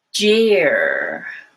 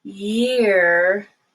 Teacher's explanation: the first one has a stop of the airflow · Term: stop sound